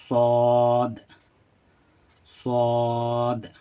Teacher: ज़बान का सिरा जो होता है दाएं बाएं कोई भी तरफ जब ये टच होता है ज़बान का सिरा तो ये स्वाद अदा होती है और इसको मोटा करके पढ़ेंगे।